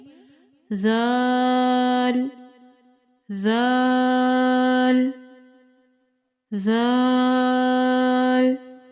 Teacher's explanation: जुबान की नोक जब ऊपर वाले दो दांतों के सिरे से लगे इससे जाल अदा होता है